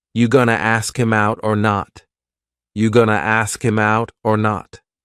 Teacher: It's another informal contraction, just like wanna. Gonna is generally pronounced with the schwa.